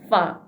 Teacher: bibir bawah ya menyentuh gigi yang atas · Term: huruf fa